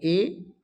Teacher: तो कंठ तालव्य हो गया ए जब बोलोगे तो कंठ से आवाज आएगी ए, और तालु का भी इसमें प्रयोग होगा